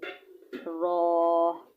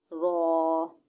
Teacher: را کیسے ادا ہونا ہے؟ زبان کی نوک اور مقابل کے تالو سے ادا ہوتا ہے